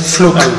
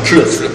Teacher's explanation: a final de palabra, precedido de vogal, no sotaque suizo sempre se pronuncia como K